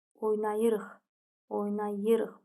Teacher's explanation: Vurğu 3-cü hecanın üzərindədir.